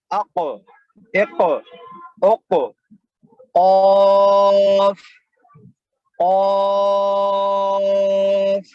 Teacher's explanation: تو زبان کی جڑ جو ہوتی ہے اس کی جو ابتدائی زبان کی جڑ جہاں سے زبان شروع ہو رہی ہے اس کے اوپر جو تعلق ہوتا ہے وہاں پر لگانے سے قاف ادا ہوتا ہے۔ زبان کی جڑ کو اوپر لگانے سے قاف ادا ہوتا ہے۔